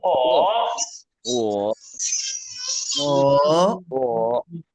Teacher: The third one is the curved tone, falling rising tone.